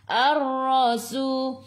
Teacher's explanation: Alif lam syamsiyah, lam tak ada sukun, selepasnya ada sabdu, terus tekan ke dalam ra. Ra sifat hurufnya takrir, kena ada getaran, sederhana sahaja. Ra baca dengan tebal, ra baris atas tafkhim. Su 2 harakat, ada waw mad asli.